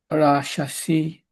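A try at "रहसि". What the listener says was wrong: Rash? No. There's no sh. Rahasi. Rahasi.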